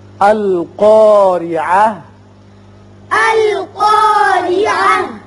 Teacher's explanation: را کے نیچے زیر ہے، را باریک ہوگا.